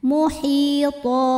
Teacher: cara bacanya baris duanya jadi satu jadi fathah dan dipanjangkan dua harakat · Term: Mad iwad